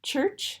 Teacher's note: we have that post-alveolar affricate at the beginning and the end